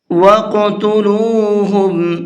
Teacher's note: قاف کے اندر قلقلہ کریں گے، یعنی ہلکا سا آواز کو ڈبل کر کے پڑھیں گے، اس لیے کہ قاف حروف قلقلہ میں سے ہے اور یہ ساکن بھی ہے۔